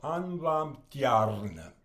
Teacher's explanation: And again, the two R's you trill.